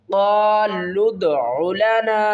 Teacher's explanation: لام کو ہم دال کے ساتھ ملا کر پڑھیں گے